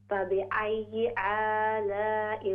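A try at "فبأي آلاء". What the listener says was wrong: फबिअय्यि आलाइ, मत को लंबा कीजिए।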